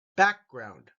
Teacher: it silently or aloud occupation Hobbies easy one family family background the back gets the emphasis